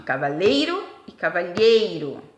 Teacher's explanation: Na verdade, elas são paroxítonas. A sílaba tônica é a penúltima.